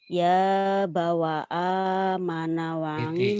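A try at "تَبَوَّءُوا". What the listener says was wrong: titiknya di atas tab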